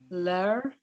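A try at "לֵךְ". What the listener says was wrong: Nope. It's a final chaf.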